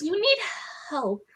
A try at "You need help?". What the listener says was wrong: It actually sounded like you said it. You didn't ask a question. It sounded like you just told her that she needs help.